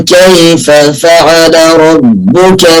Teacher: ونفصل الفاء الأولى عن الفاء الثانية